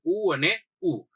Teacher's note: ઉ અને ઉ એટલે હોઠ સેજ આડો ઓળો થશે. ઉ અને ઉ હોઠમાંથી બોલે છે, એટલે એને આપણે ઓષ્ટ્ય કીધું